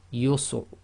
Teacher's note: sometimes the Ra is almost not audible